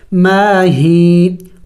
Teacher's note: اور یا مدہ کو ایک الف کے مقدار کھینچنا ہوتا ہے